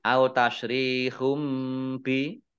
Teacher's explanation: Dhammah tanwin bertemu dengan huruf ba, bacaan iklab, dibaca membalik, baknya dibaca mim terlebih dahulu.